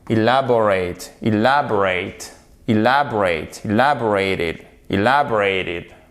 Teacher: Le E est tout seul. Il constitue une syllabe à lui tout seul et il est non accentué. OK? Donc là, il se prononce comme un I court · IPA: /ɪ/